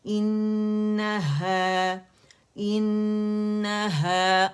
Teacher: حمزہ الگ ہے اور نون حرف غنہ مشدد ہے, اکمل گریڈ کا غنہ ہم نے کیا